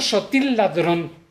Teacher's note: no suena la primera L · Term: eclisis